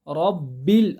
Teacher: را کو موٹا پڑھنا، با کسرہ بی، با کو باریک پڑھنا